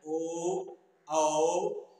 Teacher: ओ और औ, इनका उच्चारण स्थान कंठोष्ठ है, यानी कंठ से भी हो रहा है और होठ से भी हो रहा है।